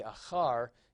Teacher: And so you can see achar is accented on the last syllable. It is not a Segolate noun, but it does resemble one.